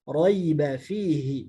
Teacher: ya yang pertama ini ya lin karena sebelumnya fathah, sedangkan ya yang kedua ini ya mad karena sebelumnya kasrah